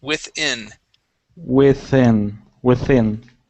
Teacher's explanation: You had said within, using an E sound. We want to use short I's.